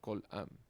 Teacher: cuando se usa el makef, el acento se desplaza de kol a am.